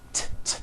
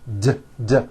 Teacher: you do not hear any T sounds. T, t. They're only D's, d, d, which are voiced.